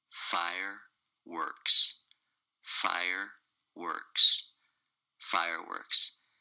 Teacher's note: it's two syllables and the stress is on the first syllable